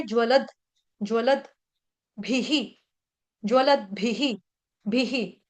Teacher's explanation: भी के साथ ह्रस्व मात्रा, विसर्ग का उच्चारण ह के साथ छोटी मात्रा ह्रस्व मात्रा ही